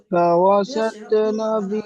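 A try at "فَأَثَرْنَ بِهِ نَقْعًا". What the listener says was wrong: না, আপনি বললেন ফাওয়াসাত, এটা ফাআসাত হামজা আছে, ফার পরে হামজা আছে, ওয়াও নয়। ফাআসাত, ফাআসাত বলেন। ফাআসাত নাবিহি নাকআ। ফাওয়াসাত নয়, ভুল হচ্ছে। ফাআসাত, ফাআসাত আর ফাওয়াসাত দুজনের মধ্যে পার্থক্য আছে। ফাওয়াসাত বললে ভুল।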